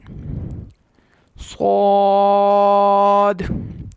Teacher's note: صاد حروف مستعلیہ میں سے ہے، پر پڑھنا ہے